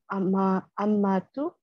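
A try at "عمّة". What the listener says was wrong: When we stop at a word, we usually don't read the last vowel. So just say Amma.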